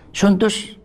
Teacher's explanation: سندس بما في السين من همس، وما في النون من شبه غنة اللاحقة